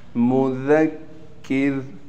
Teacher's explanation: انت مذکر، میم پر پیش ہے لیکن میم کو ہم نے بالکل نہیں کھینچنا۔ مذکر، را کو وقف کی حالت میں را باریک پڑھیں گے